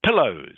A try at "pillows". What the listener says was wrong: always be sure to pronounce the S on the end of words that are plural. Okay, you must pronounce the S clearly.